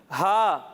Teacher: اسے ہم 1 الف تک کھینچیں گے اور اسے ہم حلق کے نچلے حصے سے پڑھیں گے